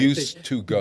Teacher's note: The D and the T merge. It's kind of an elision Yeah.